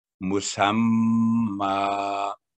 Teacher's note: मीम पर टू second गुना होगा तशदीद की वजह से मुसम्मा। आगे है नंबर सोलह मादूदातिन, तो जो यहाँ पर जो डबल कसरा है कसरा तैन है तो जदम में चेंज होगी मादूदात जब वक्त पढ़ेंगे।